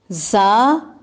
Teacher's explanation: زا، سین اور صاد، ان تینوں کا ایک ہی مخرج ہے. سیٹی بجے گی، سختی سے ادا ہوں گے